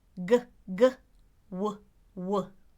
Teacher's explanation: both the /w/ and the /g/ are what we call velar consonants